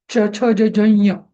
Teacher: च छ ज झ ञ इथं जीभ आपल्या टाळूला चिकटते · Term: तालव्य